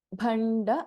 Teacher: ಭ ಮಹಾಪ್ರಾಣ and we have ಣ ಅಂಡ್ ಅಲ್ಪಪ್ರಾಣ ಡ